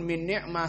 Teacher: semuanya murqqoh dibaca datar tidak ada tafkhim